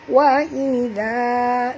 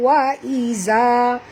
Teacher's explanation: zal sini sentil lidah tuan-tuan, kerana makhraj zal ialah di hujung lidah ya. Kalau tuan-tuan baca wa iza, itu menunjukkan keluarnya huruf zai, ini huruf zal.